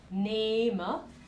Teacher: Esa E acá está seguida por una H, entonces está alargada